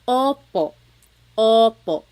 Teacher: Your tongue gets kind of pushed back and down a little bit and the inside of your mouth is open and wide.